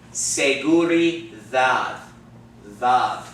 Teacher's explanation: D does not sound like a D in English. It sounds like the TH sound in the word the, okay? Not the hard TH like thank you, no.